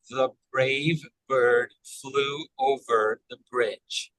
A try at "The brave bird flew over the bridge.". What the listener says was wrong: Excellent.